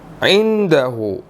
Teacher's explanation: یہاں پر نون ساکن ہے، یہاں پر اخفا ہوگا، اور اسی طرح ہا الٹا پیش ہو ہے، عِندَهُ، ٹھیک ہے.